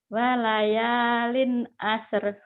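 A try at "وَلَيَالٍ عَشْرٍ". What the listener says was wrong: Walayalin asr. Asyar hutangmu tuh. Walayalin asyar. Shin. Kumaha itu ya udah pintar tapi shinnya nggak keluar. Walayalin asyar gitu.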